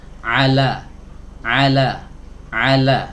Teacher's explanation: huruf lam di sini keluar dari sisi lidah bagian depan